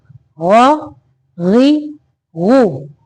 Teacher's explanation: गैन को मोटा पढ़ना है, ये पुर हरफ है यानी मोटा हरफ है